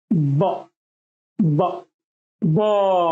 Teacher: Stop sound, থামা বর্ণ, থেমে যায়, লং হবে না, টানা যাবে না।